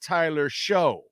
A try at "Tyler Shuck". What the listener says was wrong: Well, Tyler Shuck. It's pronounced Shuck, by the way. It's not Show.